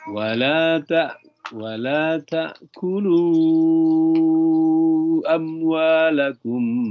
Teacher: Mim sukun ketemu dengan ba itu berdengung ditahan.